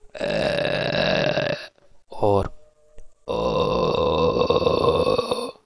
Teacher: so it is actually a creaky voice